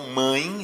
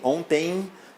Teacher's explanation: para que seja um ditongo nasal, a corrente de ar passa aí pelas narinas